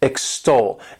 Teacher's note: This word has 2 syllables, and the stress is on that second syllable